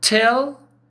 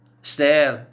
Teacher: Tell, aspirated. Stale, no aspiration.